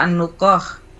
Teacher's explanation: Ini kalimat yang berdekatan makhrajnya. Qaf di pangkal lidah, kemudian kho di ujung tenggorokan yang berdekatan dengan qaf.